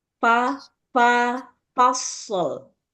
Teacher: Jadi jangan dipikirin shortnya dulu, tapi yang dipikirinnya fa dulu. Fa kan huruf tipis, lidahnya lebih rileks.